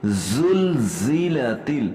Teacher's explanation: یہاں دونوں جگہ پہ زا ہے اور اس کو ہم نے سختی اور سیٹی کی آواز میں پڑھنا ہے